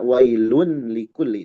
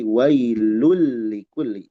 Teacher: kalau kita mendapati tanwin atau nun sukun menghadapi huruf lam, maka tanwin dan nun sukun tersebut melebur ke lam. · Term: idgam kamil